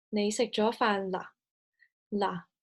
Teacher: noted that the intonation of this example is not rising the final particle determines if this is a question or a